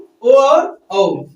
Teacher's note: कंठोष्ठ, यानी कि ओ और औ। कंठ और ओष्ठ यानी कंठ से और ओठ से कौन बोला जाएगा बाबू?